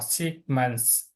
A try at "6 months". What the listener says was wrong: 6 kéo dài chữ x ra, kéo dài chữ x ra.